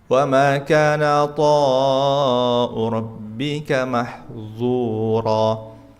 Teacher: Yang bawah tebal, mahzu pakai dha